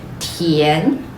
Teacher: go all the way up until you feel like that's the top